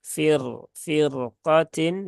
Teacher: roknya dibaca tebal ya, tidak dibaca tipis ya, karena dia berhubungan dengan huruf isti'la yang berharokat fathah